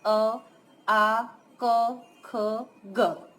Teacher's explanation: कंठ से स्पर्श कर निकलने वाले वर्ण है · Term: कंठय